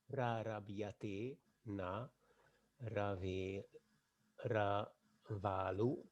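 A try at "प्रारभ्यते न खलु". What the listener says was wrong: Not Ravalu. It is Kalu. One word. Ka. Rava will be having some space between them.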